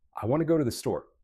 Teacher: Notice how some words are softer. To, the. And some words are stronger. Want, go, store. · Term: sentence rhythm